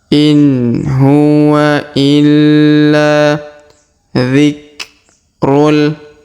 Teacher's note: Huruf la ditahan dan ditekan karena terdapat tanda tasdid.